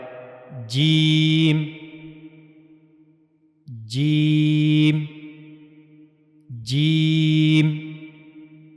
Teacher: जबान के दरमियाने हिस्से का मुंह के ऊपर वाले हिस्से से मिलना यह जरूरी है कि जबान का दरमियानी हिस्सा मुंह के ऊपर वाले हिस्से से यहां जाकर मिलेगा तो जब जीम सही तरीके से अदा होगा। · زبان کا درمیانی حصہ جب منہ کے اوپر والے حصے کے ساتھ جا کر ملتا ہے تو تب جیم ادا ہوتا ہے، · جیم کو ادا کرنے کے لیے زبان کا درمیانی حصہ اور منہ کا اوپر والا حصہ استعمال ہوتا ہے۔ یہ زبان کا درمیانی حصہ ہے اور یہ منہ کا اوپر والا حصہ ہے۔